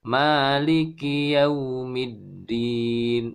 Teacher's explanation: Yau sempurnakan u dengan kedua bibir mencucu, monyong ke depan ya.